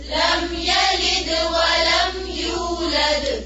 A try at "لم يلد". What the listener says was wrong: یلد یا کی زبر کو لمبا نہیں کھینچنا. یلد نہیں. یلد لم یلد ولم یولد.